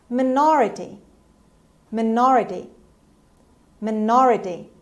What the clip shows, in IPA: məˈnɑːrəti